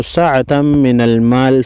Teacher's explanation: سعة من المال میم ساکن کو غنہ کر کے پڑھیں گے تنوین کے بعد میم مشدد ہے یہاں پر ادغام مع غنہ ہوگا